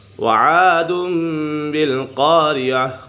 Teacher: نون سکین ہے، تنوین کے بعد حرف با جائے تو اقلاب ہوگا، یعنی نون سکین اور تنوین کو میم سے بدل کر اخفا کریں گے، یعنی غنہ کر کے پڑھیں گے